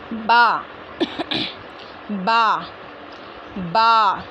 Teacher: दोनों होठों के गीले हिस्से से अदा होता है